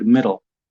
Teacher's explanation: it's very hard for Polish speakers to gain that lateral L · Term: dark L